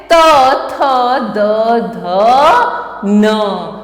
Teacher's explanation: इसका उच्चारण दंत से होता है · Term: त वर्ग